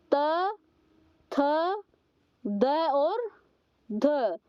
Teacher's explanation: जो इनका उच्चारण है वो जीभ है जब हमारी दांतों को स्पर्श करती है। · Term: दंत्य